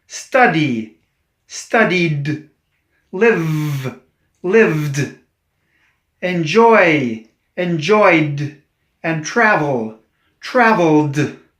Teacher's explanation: These are voiced endings, and they end in a D sound.